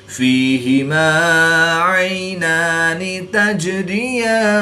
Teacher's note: या साकिन से पहले फाक नीचे ज़ेर है, तो या मद्दा, इसको एक अलिफ यानी 2 हरकत के बराबर खींचकर पढ़ेंगे। जीम हरूफ़ कलकला में से है और ये साकिन है, तो यहाँ पर कलकला सुगरा करके पढ़ेंगे · या साकिन से पहले आइन पर ज़बर है, तो या लीन, इसको लंबा नहीं करेंगे